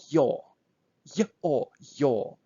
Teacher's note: So this is, we call them diphthongs. So this is a sound which consists on two sounds, short y and long o